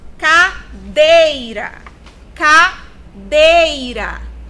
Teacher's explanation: Dei é a sílaba tônica dessa palavra.